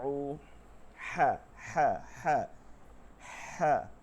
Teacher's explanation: গলার মধ্য থেকে বাতাস বের করে নিয়ে আসতে হবে হায়ের সময়।